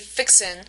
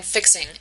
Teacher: that's a phonological rule that they drop the G in the ing words